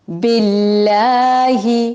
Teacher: اللہ تعالی کے نام کو باریک پڑھا جائے گا کیونکہ اس سے پہلے زیر آئی ہے.